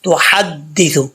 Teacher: ہا کو ہا پڑھ جاتے ہیں موٹی ہا، یہاں پہ ہا بریک ہے